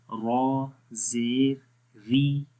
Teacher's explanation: تو ری میں آواز باریک پڑھیں گے، اوپر کی طرف نہیں جائے گی، نیچے کی طرف ہی رہے گی